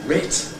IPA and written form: rɪt (writ)